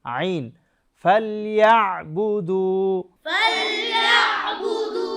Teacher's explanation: আইন হলকের মধ্যখান থেকে উচ্চারণ করতে হবে